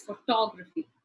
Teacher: the stress would go on the second syllable